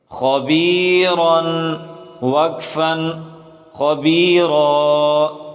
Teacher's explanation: خا کو موٹا کر کے پڑھیں اور را کو بھی موٹا کر کے پڑھیں